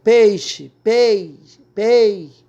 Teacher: Nós vemos que o E ele tem um som mais forte, então seria a vogal. O I já tem um som mais fraco. O I seria, nesse caso, a semivogal da palavra, certo?